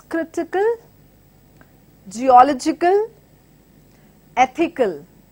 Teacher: words ending with AL as well takes anti-penultimate stress